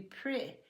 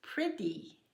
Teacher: in the southern part of the United States, we have a tendency to change that eh to a short I sound